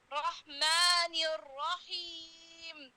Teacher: मद नहीं लगाना सिर्फ मुंह को लंबाई में खोलना है